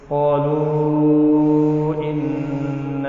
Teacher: قالو جو ہے یہ مد اصل ہے، اس کے بعد الف کی شکل میں حمزہ آیا ہے، اس وجہ سے مد منفصل ہوا ہے۔